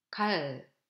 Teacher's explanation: The letter L sound, which is always light, the tongue top touching the alveolar dental area. It appears in the syllable final position or in the neighboring of another L sound as kul.